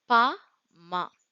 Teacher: மேல் இதழும் கீழ் இதழும் சேர பிறக்கும் எழுத்துக்கள்